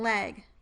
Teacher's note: The other liquid sound in English is the voiced alveolar liquid, the first sound in leg.